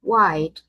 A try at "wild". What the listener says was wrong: So here you pronounce this as wild because I'm hearing wide. If you say wide, this is wide, but this is wild. Yes, wild. As in child, wild, child, wild, child.